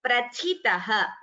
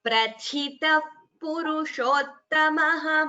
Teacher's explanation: the first tha is mahaprana, second is alpaprana.